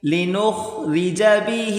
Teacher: را کو باریک کریں خا کو موٹا کریں گے